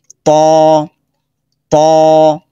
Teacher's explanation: যেরকম ত ত মোটা আওয়াজে ত ত। জিহ্বার আগা দাঁতের উপরের দাঁতের গোড়া থেকে ধাক্কা দিবেন। · জিহ্বার আগা উপরের দাঁতের গোড়াতে স্পর্শ করবে। বাতাস বন্ধ থাকবে, আওয়াজ শক্ত হবে। যেরকম ত ত মোটা আওয়াজে ত ত।